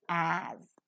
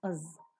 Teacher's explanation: The next importantly used conjunction is as. The strong form of it is as, but is always reduced to its weak form as.